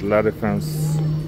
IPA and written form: la de.fɑ̃s (La Défense)